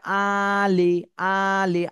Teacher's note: আ তে টান দিতে হবে এক আলিফ লি তে দ্রুত বলতে হবে